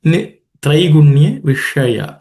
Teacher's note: The sh is the cerebral sh. The tip of the tongue ideally should be pointing upwards.